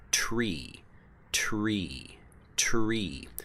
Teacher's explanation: so you have to pronounce them at the same time but the T and the R it's actually two different sounds that are blended together very quickly so this is just a blend of the sounds instead of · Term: tr blend